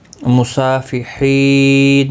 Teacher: وقف کی صورت میں نون ساکن پڑھا جائے گا، وقف بالاسکان ہوگا، مد العارض وقفی ہوگا۔ مصافحین، 3 سے 5 الف کی مقدار کے برابر کھینچ کر وقف کریں گے، کیونکہ یہاں پر وقف مطلق ہے، ملانے کی صورت میں نون اپنی حرکت کے ساتھ پڑھا جائے گا۔